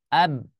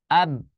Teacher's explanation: huruf ba itu huruf yang tidak mengalir suaranya Ketika saya ucapkan AB sudah selesai di sana ya ab nah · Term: sifat syiddah